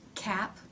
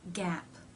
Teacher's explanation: sounds are paired together because they take the same mouth position k is unvoiced meaning only air passes through your mouth and g is voiced meaning you're making a sound with your vocal cords